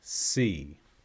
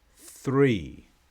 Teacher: the tip of your tongue must get between your teeth it must not stay behind